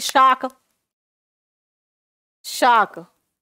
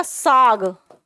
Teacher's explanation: का और खा क्या है, अघोष है, और गा क्या है, घोष है।